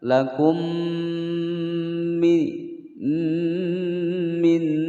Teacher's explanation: Cara membacanya disamarkan dan didengungkan selama 2 ketukan. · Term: ikhfa